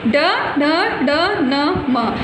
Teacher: ये वर्ण नासिका से बोले जाते हैं, अतः इन्हें नासिक्य वर्ण कहते हैं